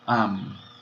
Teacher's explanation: Então, essa sílaba, esse A, apesar de ser breve, a sílaba é longa, porque ela fecha, termina em consoante. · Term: longa por posição